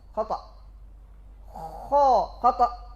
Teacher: Ketika diletakkan pada makhraj, langsung keluar suara dan nafas yang tebal. Dia tidak seperti orang yang mendengkur ataupun ngorok. · Mengalir suara dan nafas, tapi tidak mubalaghah dalam mengalir suara dan nafas itu, tidak seperti orang ngorok. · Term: Huruf kha